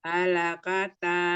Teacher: Yang panjang hanya di akhir Mi.